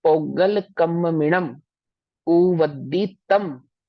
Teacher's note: generally जो अंतिम शब्द होता है उस पर जो अनुस्वार होता है अंतिम बिंदु उसको मा में ही उच्चारित करते हैं